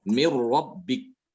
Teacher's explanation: apabila nun sukun atau tanwin bertemu dengan ro juga tanpa disertai dengan gunnah ya. Tanpa ada suara dari hidung. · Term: idgham bila gunnah